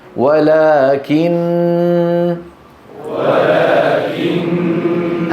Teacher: هذه الغنه المطوله تغني عن الضغط فلا داعي للنبر هنا